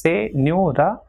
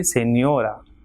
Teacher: Same way, señora, 3 syllables, señora. So second last will be stressed as it is ending in a.